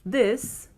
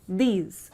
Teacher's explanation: the word this has a short sound and the word these has a very long sound